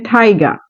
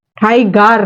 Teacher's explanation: এখানে কিন্তু আরটা উচ্চারণ হচ্ছে না, কারণ বলা হয়েছিল যে শব্দের শেষে যদি আর থাকে তাহলে সেটাকে আমরা উচ্চারণ করব না সাউন্ডটাকে